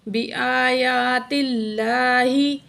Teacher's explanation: لفظ اللہ سے پہلے تا کے نیچے زیر ہے تو اللہ کو باریک پڑھا جائے گا